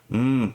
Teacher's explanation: is actually a bilabial, so it's two lips, so it's a mm sound, the m.